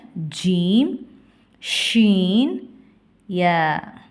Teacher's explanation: ஜீம் ஷீன் யா நாவின் நடு பகுதி மேல்முறசை தொடும் பொழுது ஒளிக்க பெறுகின்றன